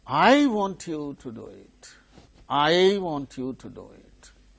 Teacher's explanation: you is the tonic syllable and before that there is a stressed syllable want